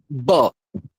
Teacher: বটা দুটো ঠোঁট চেপে উচ্চারণ হয় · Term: বর্গীয় ব